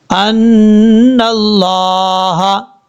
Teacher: اب اس کے بعد ہے ان اللہ، حمزہ نون زبر ان، نون لام زبر نل، لام کھڑا زبر لا، ناللہ، ان اللہ، یہاں پر نون کے اوپر شد غنہ کریں گے، ایک الف کی مقدار